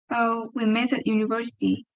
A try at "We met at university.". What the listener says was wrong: Better, better. Okay, better. That's good.